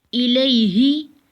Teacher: یا ساکن ہے اور اس سے پچھلے حرف پر زبر ہے تو یہ یا لین ہوگا، اس کو بھی نرمی سے پڑھتے ہیں